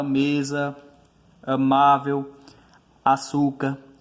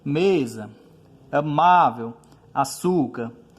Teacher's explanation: palavras em que a sílaba tônica recai sobre a penúltima sílaba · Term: paroxítonas